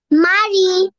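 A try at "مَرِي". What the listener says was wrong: মাশাআল্লাহ, খুব সুন্দর।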